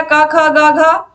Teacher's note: कंठ में का वर्ग आ गया